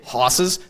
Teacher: So it's the lowering and backing of vowels, like I was talking about. So if you say hosses, that's really throwing the vowel back.